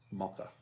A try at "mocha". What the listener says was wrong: No, you just put a U in it.